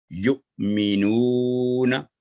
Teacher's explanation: ساکن حمزہ کو ہلکے جھٹکے کے ساتھ حلق کے نچلے حصے سے ادا کرنا